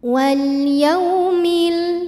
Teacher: ada waw sukun didahului fathah. Maka dibacanya lembut. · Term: harfulin